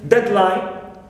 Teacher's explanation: we stress dead the first part